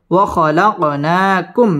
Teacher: মিম সাকিনে ইজহারে খাস গুন্নাহ ছাড়া স্পষ্ট করে পড়তে হবে